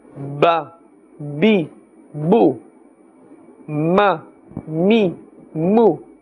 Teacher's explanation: Alright, ba and ma. Both these letters are from the lips. They are part of the Shafawiyya letters.